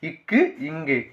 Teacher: நாவின் முதல் பகுதி அன்னத்தின் அடிப்பகுதியை பொருந்துவதால் பிறக்குது